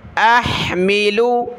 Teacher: حمزہ کو ہا کے ساتھ ملائیں گے، ہا نکالیں گلے سے